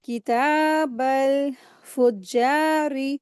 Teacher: रा के नीचे ज़ेर है, रा को बारीक पढ़ेंगे